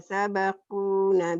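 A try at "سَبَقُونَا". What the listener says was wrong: Sabaku panjang, nanya panjang.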